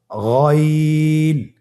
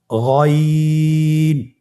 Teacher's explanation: গইন হরফটি উচ্চারিত হয় কণ্ঠনালীর শেষ ভাগ হতে। এখান থেকে উচ্চারণ করুন গইন।